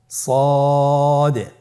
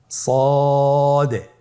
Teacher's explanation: জিহ্বার আগা, সামনের নিচের 2 দাঁতের পেট ও আগার সঙ্গে লাগিয়ে উচ্চারিত হয়।